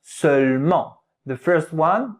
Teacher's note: The second E, you don't hear it a lot